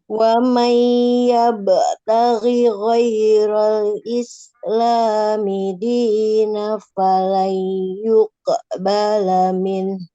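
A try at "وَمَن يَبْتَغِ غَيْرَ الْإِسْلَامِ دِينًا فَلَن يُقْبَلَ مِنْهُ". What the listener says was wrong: Dinam ada tanwin ya. Tanwin bertemu dengan huruf fa. Ikhfa hakiki.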